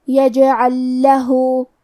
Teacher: پہلے لام کو دوسرے لام میں ملا کے ایک ہی لام تشدید کے ساتھ پڑھیں گے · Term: ادغام مثلین تام